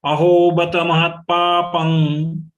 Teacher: There is a stress on her for joint letter of ta and pa. The anuswar of pa will be pronounced as nga.